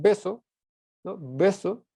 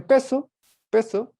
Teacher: hay una diferencia esa diferencia se marca por la sonoridad no en beso las cuerdas vocales vibran y en peso no lo hace